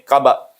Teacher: Tidak seperti yang saya bunyikan sebab saya berhenti kat sini. Kalau kita wakaf kat sini, qaba, tu banyak kuat lantunannya. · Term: qalqalah